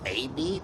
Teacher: spoke with a smile and Rising tone optimism and enthusiasm